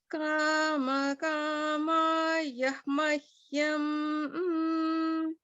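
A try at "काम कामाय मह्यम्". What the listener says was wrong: So it was good, but it sounded a little bit like you were saying kama yah. There's no, it's just kamaya. Kamaya. Kamaya mahyam.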